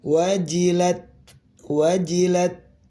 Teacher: Nah, ini ada ta sukun dia hames ya.